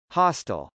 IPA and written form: hˈɑstəl (hostile)